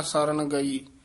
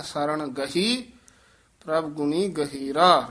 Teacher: ਗਹੀ ਹੀ ਹਹ ਨਾਲ ਉਚਾਰਨ ਕਰਨਾ ਗਈ ਨਹੀਂ ਕਹਿ ਦੇਣਾ